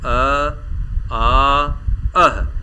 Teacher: इनका जो उच्चारण हो रहा है वह कंठ से हो रहा है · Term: कंठ स्वर